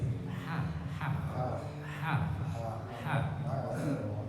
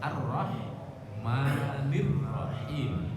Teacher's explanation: Ar-Rahmanir dia agak ditekan, jadi nggak tanggung juga. Dia bukan ha dan juga bukan kha dan bukan di mulut tapi di tenggorokan. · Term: hak